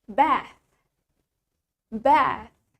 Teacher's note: in British English, it has the longer A. Biasanya di bahasa Inggris yang dipakai oleh orang Inggris, huruf A-nya lebih panjang, longer A.